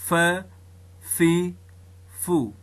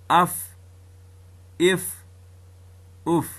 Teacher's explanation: ثنایه علیا غاښونه راځي د لاندې شونډې د منځ سره مښلي، ټکر ورسره خوري، دلته فا ادا کیږي. یعنی د ثنایه علیا غاښونو او د لاندې شونډې د یو ځای کېدو څخه فا راوځي، فا زیږي، فا ادا کیږي.